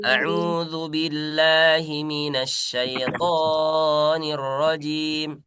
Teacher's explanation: Tonya jangan sampai terlalu panjang.